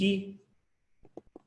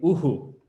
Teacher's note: If I have u then visarga, then it'll be uhu. Okay, so the visarga sound matches the sound before it